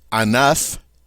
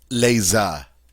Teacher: when we add our S to make it plural, we lose the F sound.